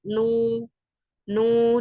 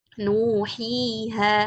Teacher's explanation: ada dhammah nih, kemudian setelahnya ada wawu sukun, nah maka harus dibacanya panjang sekitar 2 harokat ya, harus dibaca 2 harokat. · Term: mad tabi'i